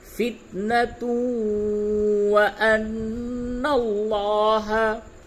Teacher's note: تا کو واو سے ملائیں گے، یہ ادغام مع الغنہ